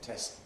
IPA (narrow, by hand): tesʔ